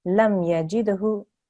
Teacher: Make sure you've got your qalqala there because there's a dal there. So you make a slight jerk there and then hu at the end.